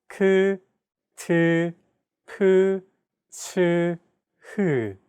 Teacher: Aspirated sounds are pronounced with a big burst of air, unlike plain sounds which do not have this quality.